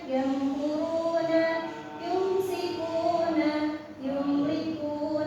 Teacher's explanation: Jadi untuk membaca mim sukun itu dua bibirnya bertemu. Nah, jadi mim tapi ee tidak ditahan.